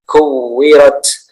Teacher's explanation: Taknya ketika di akhir kalimat atau di akhir ayat ya, taknya ditambahkan sedikit s ya.